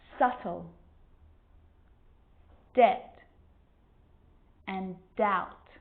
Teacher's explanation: my lips aren't closing and coming together to form the b sound i'm just pronouncing the t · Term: silent